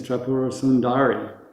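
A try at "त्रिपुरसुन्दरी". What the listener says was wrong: You keep saying try. Like you're going on a trip.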